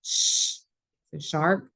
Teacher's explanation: the sh in shark is an unvoiced diagraph and it can be held so as long as you have breath you can make this